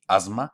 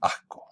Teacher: la sibilante que se realiza o bien como sibilante, asma, o como aspiración, asco